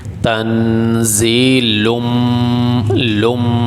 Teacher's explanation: اب یہ لام کے اوپر آگے تنوین، اس کے بعد یہ میم ہے، تو تنوین کے بعد میم آ جائے تو اس کو میم بنا کر میم میں داخل کر دیتے ہیں، تنوین کو میم میں داخل کر دیا جاتا ہے، اور میم پہ غنہ کیا جائے گا۔ تنوین کو میم کے ساتھ ملا کے غنے کے ساتھ پڑھیں گے۔